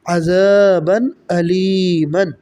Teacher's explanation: تنوین کے بعد حمزہ آ رہا ہے جو کہ حروف حلقی میں سے ہے، یعنی حلق سے ادا ہونے والے حروف میں سے ہے حمزہ